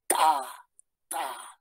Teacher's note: Es una oclusiva, es alveolar y es sorda. · detenemos el aire. Y cuando queremos pronunciar ya la T, lo soltamos con la vocal. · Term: oclusiva alveolar